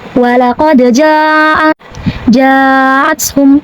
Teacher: Kemudian hamzahnya a pada kata jaathum. Maka jim dipanjangkan boleh 4 sampai 5 harakat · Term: mad wajib muntasil